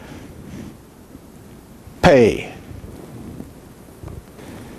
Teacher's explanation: Now, the pe with a doggish is pronounced like the P of English, the P of pop. It is bilabial, stop, and voiceless also. Stop. That means the airstream is stopped. Pe. And then, of course, we have pe in the final position, which is called pe sophete.